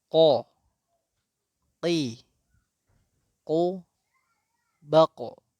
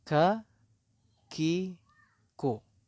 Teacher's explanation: Kemudian selanjutnya adalah huruf yang sering tertukar adalah huruf qaf dengan huruf kaf. Huruf qaf makhrajnya lebih dalam daripada huruf kaf.